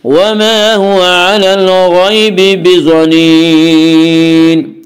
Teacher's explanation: الف مدہ کو ایک الف کے برابر کھینچ کر پڑھیں گے۔ وما هو علی الغیب، علی الغیب، غین کو پر پڑھیں گے، غین حروف مستعلیہ میں سے ہے۔